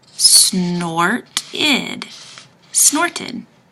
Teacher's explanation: when I get to ed, I have to say id because there's a T in front of the ed. Snorted. Snorted.